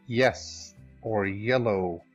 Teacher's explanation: This sound is voiced. So far we can describe the y sound as being plus voiced, or plus voice, and that it is palatal, meaning that it occurs or happens or is articulated at the hard palate. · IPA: [j]